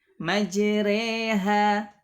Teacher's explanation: Nah, kemudian yang kelima, ar-ra'ul mumalah fi kalimah majreha. Nah, jadi dibaca imalah, dimiringkan bunyinya jadi bunyi kasrahnya jadi majreha, jadi dibaca tipis, ya, bukan dibaca majroha, karena ini kita di riwayat Hafs an Asim dibaca majreha, Taib.